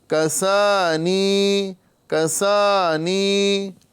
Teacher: تو پڑھیں گے الحمد للہ الذی کسانی، یہاں پر الف مدہ اور یا مدہ دونوں کو ایک ایک الف کے برابر کھینچیں گے